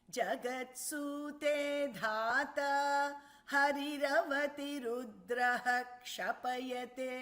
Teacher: the Visarga should be chanted completely when it is followed by Ksha.